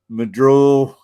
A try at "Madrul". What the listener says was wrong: There's no R's. My duel. No R's pronounced.